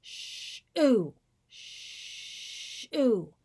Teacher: you can hear the harder glottal attack when I release to the vowel on shoe.